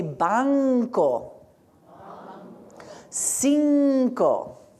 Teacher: whenever we have N before C in Spanish, we also say nk